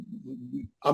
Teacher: मीम दोनों होठों के खुश्क हिस्से के मिलने से निकलती वेरी गुड क्योंकि दोनों होठों को जब हम सख्ती से पकड़ेंगे